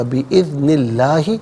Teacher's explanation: لام سے پہلے والے حرف نون کے نیچے زیر ہے تو اسم اللہ کی حرف لام کو باریک کر کے پڑھا جائے گا